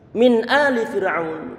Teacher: Izhar. Berarti nun dibaca secara jelas. Nggak boleh ada penahan suara dengungan. Walaupun dengungan ada, cuma jangan ditahan. Dan juga dia perlu untuk diucapkan secara jelas, tanpa diganti dengan huruf yang lainnya.